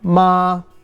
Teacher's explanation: there's the high tone ma meaning mother rising ma is hemp falling rising ma that is horse falling